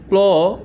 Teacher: ল উচ্চারিত হলো এই জিহভা এবং উপরের পার্টি দাঁতের গোড়া থেকে এই দুটি এত তাড়াতাড়ি উচ্চারিত হয়েছে যে নিঃশ্বাসের একই প্রয়াসে একই চেষ্টায় একই ধাক্কায় আমি প্ল যুক্ত ব্যঞ্জনটি উচ্চারণ করেছি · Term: সংযুক্ত ব্যঞ্জন ধ্বনি